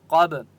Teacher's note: قاف مستعلیہ میں سے ہے اس لیے قاف کو موٹا پڑھیں گے، با کے اوپر قلقلہ ہوگا